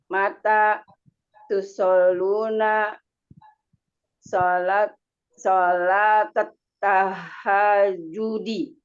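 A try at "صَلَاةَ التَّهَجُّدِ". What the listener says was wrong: Tadi pas tahajudnya udah oke. Alnya saja yang belum oke tadi.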